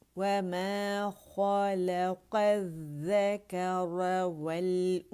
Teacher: اچھا، وَمَا کو باریک تھا، کمپلیٹ رولنگ ہوگی. واو جہاں بھی ہے واو باریکی سے ادا ہوگا، کمپلیٹ رولنگ ہوگی لپس کی. ما جو ہے الف مدہ ہے، اور الف کبیرہ جو ہے الف ممدودہ میم کی آواز کو 2 کاؤنٹ کے لیے اونچے اوپر کی طرف کھینچ رہا ہے، ٹھیک ہے.